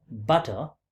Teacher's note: A flap is again an allophone of t, which occurs between a stressed vowel and unstressed vowel, right? This is a stressed vowel and this is unstressed vowel.